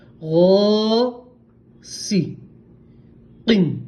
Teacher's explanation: غین پور پڑھیں گے، غو اور تھوڑا کھینچیں گے، تھوڑا سا کھینچیں گے کیونکہ الف مدہ ہے